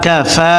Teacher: ফায়ের উপরে খারা জবর আসার কারণে এক আলিফ টানিয়া পড়িতে হইবে। কাফ জবর কা, ফা খারা জবর ফা, কাফা।